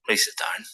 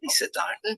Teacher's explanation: very flat intonation going down. Do I sound happy or rude or serious?